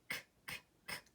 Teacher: We use the back of our throat to make the sound for C, but we don't use our voice. So your voice is actually turned off for k, k, k. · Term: voice off